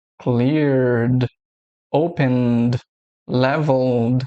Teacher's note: É um som que as cordas vocais vibram e você continua com esse som do D. A diferença do D e do T é que o D tem um som vibrado e o T não. · Aqui nós temos a regra de que quando a última letra do verbo for uma dessas daqui, a gente vai pronunciar o som do D vibrado